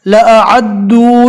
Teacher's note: وَلَوْ أَرَادُوا الْخُرُوجَ لَأَعَدُّوا، الف کو نارمل پڑھنا ہے، عین کو حلق سے ادا کرنا ہے۔